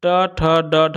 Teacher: ट ठ ड ढ हम लोग जो पढ़ते हैं मूर्धा से होता है